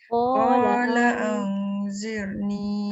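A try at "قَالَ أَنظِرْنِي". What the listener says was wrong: Ada bunyi sofir. Tak keluar lidah tu. Dia tu yang dia berbunyi tu. Dia keluar hujung lidah tu menyebabkan kita punya sofir tu hilang. Kalau kita keluar lidah. Kalau tak keluar lidah dia akan bunyi zoziz.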